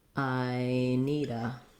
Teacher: the d is also a light flap linking into the word